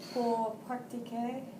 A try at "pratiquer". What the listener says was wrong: Be careful, it's pratiquer, not pract.